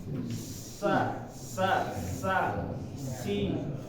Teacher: kalau Sin ini keluar dari celah sempit di ujung gigi atas